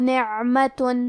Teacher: حرف العین کی ادائیگی حلق کے درمیان والے حصے سے ہے، اور کیونکہ اس پہ جزم ہے لہذا ہمیں عین کو ظاہر کرنا ہے.